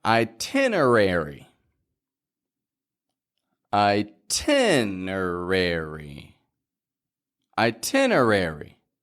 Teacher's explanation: the syllable stress is in the Tin part that's the strong part of the word